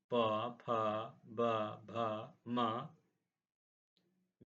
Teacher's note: अब हम आते हैं ओष्ठ ओष्ठ से उच्चारित होने वाले उ प से लेकर के म तक अर्थात प वर्ग पूरा प फ ब भ म यह आपके ओष्ठ से उच्चारित होते हैं।